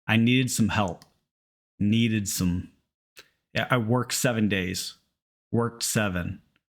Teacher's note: notice you don't hear that t or d much at all